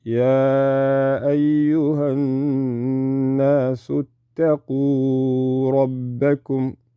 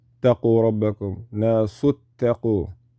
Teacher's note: because the alif wasl, you jump right over it